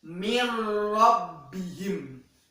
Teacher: tetapi secara kita pengucapannya atau kita mendengarkannya itu yang benar adalah mir rabbihim, seperti huruf nunnya tidak terbaca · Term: idgham bila gunnah